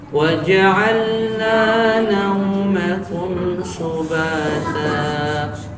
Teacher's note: Waw mati sebelumnya berharokat fathah. Ada waw mati sebelumnya ada huruf yang berharokat fathah. Maka dia namanya harful lin, nggak boleh dipanjangkan.